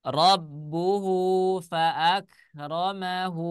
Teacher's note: Cuman bentuknya seperti huruf tak marbutoh. Mad yang terdapat di huruf H dibaca panjang apabila dalam keadaan wasol. Nah, apabila dia dalam keadaan wasol atau bisa disebut dengan meneruskan bacaan atau menyambung bacaan. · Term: mad silah qasiroh